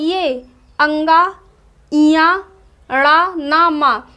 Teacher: वर्गों के जो पंचम अक्षर होते हैं इनका उच्चारण जो होता है वह नासिक से होता है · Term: वर्गों का पंचम अक्षर